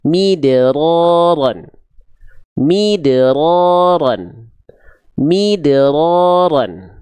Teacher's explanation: Tapi huruf dalnya di sini disukunkan, maka dia punya sifat namanya qalqalah tadi. Harus dipantulkan. · qalqalahnya ini qalqalah sughra karena dia berada di tengah, ya, di pertengahan ayat, bukan pada saat berhenti. Maka dipantulkan dengan ringan.